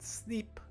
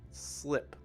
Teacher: it's important to note that the i sound is short right it's a short i sound it's not e